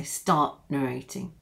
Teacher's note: you stop the air in your throat and so we call it a stop T